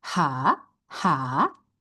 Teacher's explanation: It has its rising tone by itself like automatically rising tone.